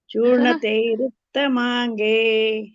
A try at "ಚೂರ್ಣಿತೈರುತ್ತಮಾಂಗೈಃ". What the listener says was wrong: ವಿಸರ್ಗ ಇದೆಯಲ್ಲ ಮಾತಾಜಿ ಅಲ್ಲಿ ಗೈ ಐಗೆ ಉಸರು ಹಚ್ಚಬೇಕಲ್ಲಮಾಂಗೈಹಿ